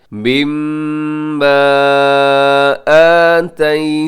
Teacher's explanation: यहाँ मिम्मा मीम मुशद्दद है, यहाँ पे गुना कीजिएगा, और उसके ऊपर जो मद है ये मद्दे मुनफसिल है।